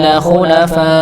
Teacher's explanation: Kalau dia disambung mengenai hunafa sampai 4 harokat. Kalau misalnya dia pas berhenti di hunafa, maka dia dipanjangnya sampai 6 harokat. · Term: mat wajib